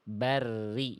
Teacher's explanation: pangkal lidahnya enggak perlu naik ya. Jangan sampai tebal dulu rnya. Rnya di sini harus tipis ya.